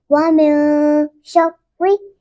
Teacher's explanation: अब हम उस पढ़ेंगे क्योंकि नून साकिन के बाद ना ही शीन हुरूफ हल्किया में से है और ना ही हुरूफ यरमलून में से है, इसलिए हम इसको पढ़ेंगे शर्रि। रो मुशद्दद है इसलिए उसको 2 बार पढ़ेंगे। पहली बार साकिन, दूसरी बार मुतहर्रिक।